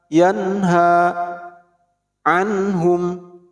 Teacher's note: ketika ada nun mati atau tanwin menghadapi huruf H, maka jadi idharul halqi, yaitu contoh nun mati menghadapi H dalam satu kalimat, yanha anhum, nun mati menghadapi H, nun mati menghadapi H, tidak boleh dipanjangkan atau tidak boleh didengungkan. Jadi bacanya harus jelas, anhum, yanha, tidak boleh dibaca yanha.